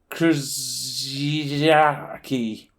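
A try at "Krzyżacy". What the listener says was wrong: I don't think that first Z is pronounced.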